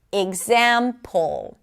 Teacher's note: the middle syllable, the zam, is the primary stress because it is longer, louder, and higher in pitch.